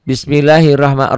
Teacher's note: Ro-nya dibaca tebal. Kenapa? Karena berbaris di atas.